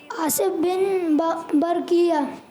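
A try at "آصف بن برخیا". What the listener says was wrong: गलती हो रही है, आसिफ तक ठीक है, किया नहीं है, बरखिया, आसिफ बिन बरखिया।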